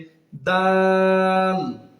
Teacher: এই হরফটি জিহ্বার আগা সামনের উপরের 2 দাঁতের গোড়ার সঙ্গে মিলিত হয়ে উচ্চারিত হবে